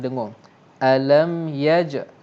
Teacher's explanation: Izhar syafawi. Izhar syafawi. Jadi tak ada dengung.